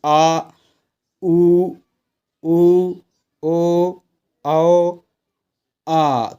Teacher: इनकी आवाज आपकी थोड़ी जीभ के पीछे से आएगी पिछले भाग से आएगी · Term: पश्च स्वर